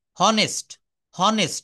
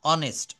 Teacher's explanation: এই এইচ এর উচ্চারণটা অ হয়ে যাবে, এইচ অনুচ্চারিত থাকবে। দেখেন অনেস্ট, HONEST, এই ও থেকে শুরু হবে, ও সমান সমান অ, এটা বলতে হবে অনেস্ট।